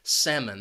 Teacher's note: that second syllable has that schwa